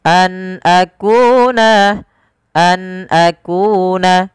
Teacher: suara nunnya diperjelas karena dia ada bacaan berupa izhar halqi Nun ketemu dengan Hamzah dijelaskan suara nunnya an akuna an akuna